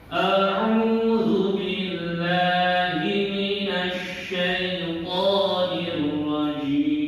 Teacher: ain ini makhrajnya di bahasa Arabnya itu wasatul halqi, di tengah-tengah tenggorokan. Jadi wasatul halqi, di tengah-tengah tenggorokan.